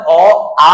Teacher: জিবার মধ্য অবস্থান থেকে উচ্চারিত হয় আবার জিবার উচ্চতা কেমন থাকে একদম নিম্ন থাকে আবার এটা এটা